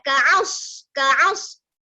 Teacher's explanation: Jadi kita kena baca ka'as. kembungkan lidah. Jangan kaas.